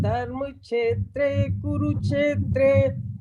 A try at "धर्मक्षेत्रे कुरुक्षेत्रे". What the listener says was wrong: आपकी बोलने में छह की आवाज आ रही है, छह आपकी ये आधा